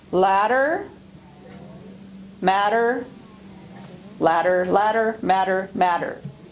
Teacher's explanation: intervocalic T and D are pronounced as a tap. And this causes words like ladder, matter to be pronounced almost identically.